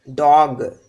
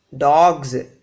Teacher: When we have a voiced sound at the end, dog, this g is voiced